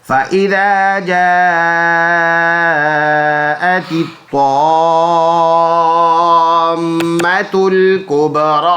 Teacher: میم مشدد غنہ ہوگا ناک میں آواز ایک کلی کی مقدار لے کے جائیں گے